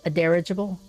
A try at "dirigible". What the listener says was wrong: Dirigible. Getting the wrong emphasis on the wrong syllable.